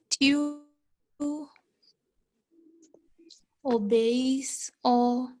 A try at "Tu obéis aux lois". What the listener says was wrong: Loi, obey. S is silent. So we say tu obéis aux lois.